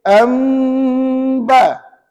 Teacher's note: Tutup je bibir Ustaz. Tapi pastikan ada bunyi sengau. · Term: tutup bibir